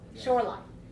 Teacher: the word Shoreline we definitely have high low because we see Shore is a noun